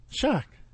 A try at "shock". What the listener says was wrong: It sounded like track.